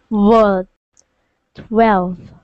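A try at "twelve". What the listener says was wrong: You don't want to say like 12, like an F. You want it to be that V sound. 12.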